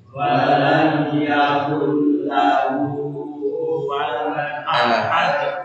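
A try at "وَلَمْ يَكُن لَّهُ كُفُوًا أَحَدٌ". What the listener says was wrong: Kurang anginnya. Kufu. Kufu.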